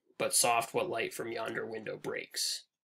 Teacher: you can see the unstressed stressed pattern sort of working throughout this line